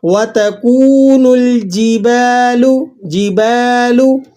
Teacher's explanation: با کے بعد الف ہے تو آپ نے اسے ایک الف تک لمبا کر لینا ہے۔